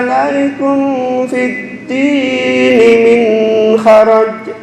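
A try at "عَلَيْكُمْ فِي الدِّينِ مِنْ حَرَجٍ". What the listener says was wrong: Alaikum, ini dengungnya terlalu lama. Bukan dengung. Ini ketambahan dengung, ini ketambahan dengung, itu yang kurang pas. Alaikum fid dini min haraj.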